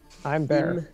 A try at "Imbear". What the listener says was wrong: Bear. Not I'm bear.